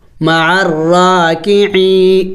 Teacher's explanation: یا مدہ کو ایک الف کے مقدار لمبا کرنا ہوتا ہے. تو ہم یہاں پہ کھینچیں گے اس کو ایک الف کے مقدار.